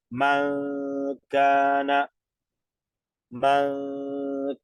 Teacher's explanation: nasalizamos dos tiempos sin tocar lengua paladar